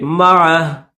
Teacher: لیکن اگر یہاں پر آپ اسٹاپ کرنا چاہیں تو اسٹاپ بھی کر سکتے ہیں۔ جب اسٹاپ کریں گے تو پھر معہ نہیں پڑھیں گے بلکہ کیسے پڑھیں گے؟ معہ، آخر میں ہا کو ظاہر کریں گے